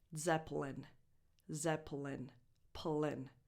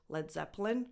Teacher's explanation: It's just a small schwa if you speak super slowly, that is just there to separate the P from the L.